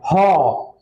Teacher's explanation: ह कंठ से आ रहा है ह का भी आवाज, उसी तरह विसर्ग का भी आवाज कंठ से ही आता है।